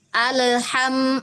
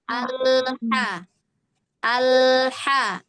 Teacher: Bagian belakang nih kan dari tenggorokan yang kerja untuk huruf ha. Jadi ujung lidahnya jangan ngusap.